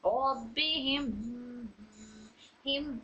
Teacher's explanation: गुन्ना पे वक्फ करेंगे, मीम मुशद्दद लेंगे उसका, लेकिन हिम्मी नहीं बोलेंगे, सिर्फ इसको साकिन करके पढ़ेंगे